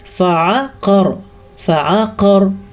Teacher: قاف بھی موٹا پڑھنا ہے, را بھی پر پڑھنا ہے کیونکہ را ساکن ہے اور پیچھے والے حرف پہ زبر ہے